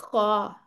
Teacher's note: बिल्कुल ऊपर अदनाउ हलक से आपकी आवाज निकलनी चाहिए। ख और ये है भी बहुत मोटा सारा।